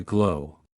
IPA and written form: ɡloʊ (Glow)